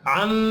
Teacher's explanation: मीम मुशद्दद पर भी गुन्ना करना है